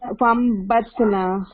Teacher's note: اقلاب کیا تھا کہ نون کا ساؤنڈ میم سے بدل دینا ہے اس لیے یہاں پہ چھوٹا سا میم دکھ رہا ہے جب